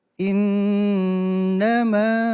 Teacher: Nun kan, kalau nun yang tasdid jangan ditekan. Nun dan mim tasdid jangan pakai tekanan, tapi dia tetap berdengung.